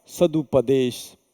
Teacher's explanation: त ध्वनि जो अघोष थी बदल के घोष ध्वनि यानी प्रथम वर्ण जो है तृतीय वर्ण में परिवर्तित हुआ है, ध्वनि बदली है, इसलिए इसको हम संधि कहेंगे।